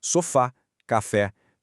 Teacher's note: a última sílaba mais forte, a sílaba tônica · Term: oxítonas